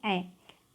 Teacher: ए जो है एक कंठ और तालु दोनों का प्रयोग करके बोला जाता है